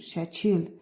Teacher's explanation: İki hecalı sözdür, vurğu ikinci hecaya düşür.